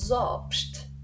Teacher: Ce phonème-là a la particularité d'être un O ouvert en suisse allemand, contrairement à l'allemand. Donc O en suisse allemand et O en allemand.